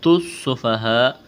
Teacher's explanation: سین میں سیٹی کی آواز پیدا کریں گے